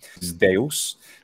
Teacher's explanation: classical Attic probably had zd during the classical Attic period